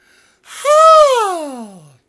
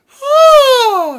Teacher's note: Very light, sort of H pharyngeal sound. Ha! With a low throat.